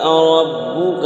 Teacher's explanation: ربک میں را پور ہوگی، را پر زبر ہے